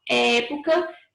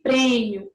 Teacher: Época tem som aberto, prêmio tem som fechado.